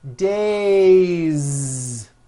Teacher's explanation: it's days with a voiced Z ending